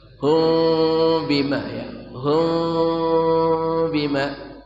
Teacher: bima bertemu ba ikhfa syafawi, samar dan dengung, mulut dibuka sedikit